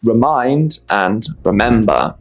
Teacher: Both remember and remind stress the second syllable.